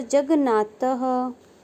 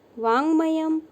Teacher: यहाँ त के बाद पांचवा वर्ण न रहने पर त का परिवर्तन पांचवें वर्ण में होकर न हुआ, जगन्नाथः बना।